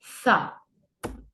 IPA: θ